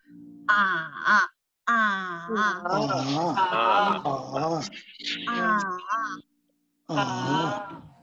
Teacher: you go down from the middle pitch and then go up to the high pitch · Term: third one